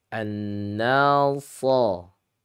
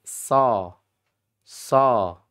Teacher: kalau shad itu yang menjadikan dia tafkhim tebal itu karena lidahnya yang naik ke atas. Makanya disebut dengan sifat al-isti'laau yaitu naik.